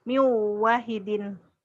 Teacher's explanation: ada nun mati atau tanwin ketemu waw. Idgham bi gunnah. Min jadi miu wahid.